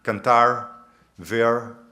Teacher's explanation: el rótico retroflejo, que algunos hablantes más jóvenes también dicen, por ejemplo, en posición final, cantar, ver, para cantar y ver, y eso está entrando en las nuevas generaciones.